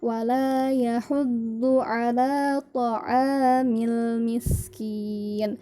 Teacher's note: Di ayat yang ketiga, di sini ada kata wala yahuddu. Nah, do itu bagian si lidah kita, baik itu kanan atau kiri atau kedua-duanya, ditempelkan ke gigi geraham bagian atas.